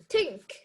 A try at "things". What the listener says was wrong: Things, things. It's things, not thing. There's S.